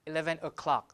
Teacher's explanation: Even the V in of is deleted at 11 o'clock instead of o'clock, 11 o'clock.